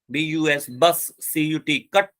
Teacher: central अनराउंडेड मोनोप्थॉन्ग just above the middle of open and half open